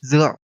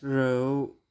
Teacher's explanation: Another letter that's pronounced as Z in Northern Vietnamese is R. In Southern Vietnamese, it's pronounced similar to the R sound commonly used in English